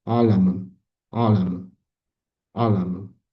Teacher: O'zbek tilida bunday tovush mavjud emas. Bo'g'iz tovushi hisoblanadi. Tovush tomoqning o'rta qismidan, hiqildoq usti sohasidan chiqadi.